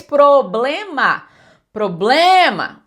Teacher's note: O blé é a mais forte · eu falo pro, eu falo bl e falo má com clareza, silabicamente ouvido